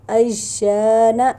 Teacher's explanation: نون زبر نا، اجانا۔ یہاں الف مدہ ہے، اس سے پہلے زبر ہے تو ایک الف کے برابر لمبا کریں گے